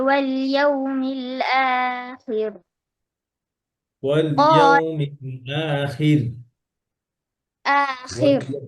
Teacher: র পাতলা হবে এখানে জেরের পরে র সুকুন হিসাবে স্টপ করছেন র সুকুন হয়ে গেছে পাতলা واليوم الآخر واليوم الآخر قال ومن